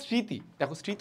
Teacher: স্মৃতি উচ্চারণে কিন্তু ম উচ্চারণ আসতেছে না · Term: ম ফলা